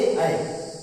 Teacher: इसका सूत्र ए दैतो अर्थात ए ऐ। ए ऐ इन दोनों का उच्चारण स्थान क्या है, कंठ और ताल दोनों है। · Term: कंठ तालु